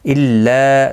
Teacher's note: لا الف مدہ ہے، ایک الف کی مقدار کے برابر کھینچ کر پڑھیں گے